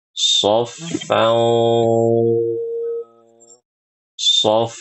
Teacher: Nah, ini Ibu sudah ikhfanya sudah bagus. Tetapi karena huruf shad adalah huruf tebal, maka harus tebal juga ikhfa dan ghunahnya